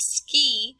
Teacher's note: we have a sound in the front of the mouth immediately moving into the back of the mouth and we're keeping in the lips open wide for that "eee" and so we have to coordinate the lips